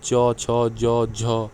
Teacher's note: जो जीभ है वह आपके तालू को स्पर्श करती है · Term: तालव्य